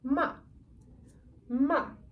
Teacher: the fourth and last tone is descending tone only